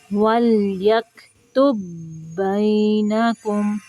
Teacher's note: جو پہلا با ہے اس کو نہیں پڑھنا، تا پیش با تو دوسرے با کے ساتھ ملانا ہے